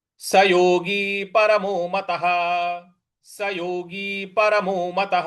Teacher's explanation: स योगी, स योगी ग पर बड़ी की मात्रा है तो सयोगी नहीं बोलना है, स योगी परमो मतः। मतः, मतः के आगे जो विसर्ग है उसके आगे कोई शब्द नहीं है, कोई अक्षर नहीं है, इस वजह से उसका उच्चारण हम ह लाएंगे